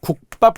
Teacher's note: 자, 국밥 같은 경우가 바로 된 소리의 발음과 관련된 건데요. 표기는 밥으로 적었어요. 그런데 발음은 된 소리로 나잖아요. 이럴 때 우리는 된 소리 발음을 반영하지 않는다는 거예요.